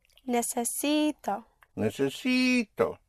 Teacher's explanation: So you push down on the syllable before last on the penultimate syllable which makes it necess and then you come up on o necess for I need.